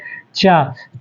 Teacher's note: च का उच्चारण स्थान तालू